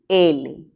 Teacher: este se llama sonido lateral verdad luego decimos que es alveolar y también es sonoro